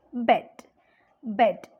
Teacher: The lips are loosely spread or neutral. Bed, bed. It is loosely spread.